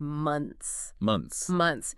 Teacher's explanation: It seems like a natural way to kind of simplify that consonant cluster at the end.